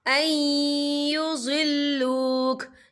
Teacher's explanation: लहम्मत ताइफतुम मिनहुम अन युज़िल्लूक, या देखें ऐ, यहाँ नून साकिन है, नून साकिन के बाद जो है या आ रहा है और या जो है रूफ़ यरमलुन में से है, तो यहाँ पर इदगाम होगा, तो हम इसे थोड़ा सा गुन्ने के साथ पढ़ेंगे